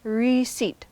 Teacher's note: It's 2 syllables with stress on the second syllable, and that P is silent.